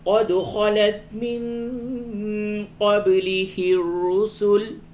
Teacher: قد دال میں قلقلہ ہوگا، نون ساکن کے بعد قاف اخفا ہوگا، با میں یہاں پہ قلقلہ ہوگا اور را کو پر کر کے پڑھیں گے.